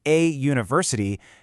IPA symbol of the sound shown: juː